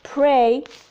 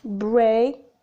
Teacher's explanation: Both are bilabial, plosive, or stops. P is voiceless and b is voiced.